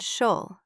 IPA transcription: ʃəl